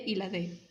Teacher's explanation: dental en este caso la lengua se ubica detrás de los dientes superiores